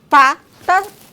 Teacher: O P é uma oclusiva bilabial desvozeada